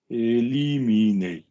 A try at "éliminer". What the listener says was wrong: Wasn't that fabulous? That was so good. Even at speed, my love.